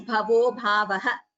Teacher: as we are pausing at the end of a pada, we chant the visarga completely. So we chant it as bhavo bhavaha.